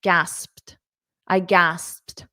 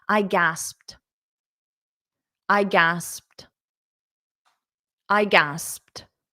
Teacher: a soft T very very soft T at the end gasped I gasped so you might need to practice that PT